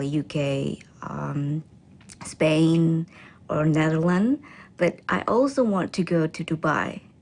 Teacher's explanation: She then lists the countries with her voice pitch rising until she ends with a level voice for Dubai.